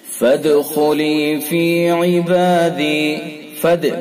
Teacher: دال کے اندر قلقلہ، خا کو پر کر کے پڑھیں گے چونکہ حروف مستعلیہ میں سے۔